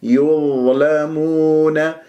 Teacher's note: والضاء ساكنة مفخمة مرتبة رابعة واللام والميم والواو بعدها كلها تكون مرققة